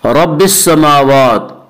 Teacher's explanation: रब की रा को पुर पढ़ेंगे। इसका कायदा यह है कि रा मुशद्दद मुतहर्रिक के ऊपर अगर ज़बर और पेश आए तो पुर पढ़ेंगे, ज़ेर आए तो बारीक पढ़ेंगे।